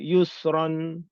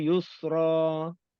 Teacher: Ran satu harakat, ra dua harakat.